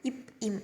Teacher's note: மேல் இதழும் கீழ் இதழும் பொருந்துவதால் பிறக்குது. நீங்கள் சொல்லி பாருங்கள், அப்போ தான் உங்களுக்கு தெரியும்.